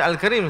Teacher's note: Dan hukumnya kena bacalah dengan izhar, kena nyatakan sebutan lam. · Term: alif lam qamariyah